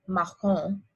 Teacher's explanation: you don't pronounce the N at the end · this has that really hard back of the throat sound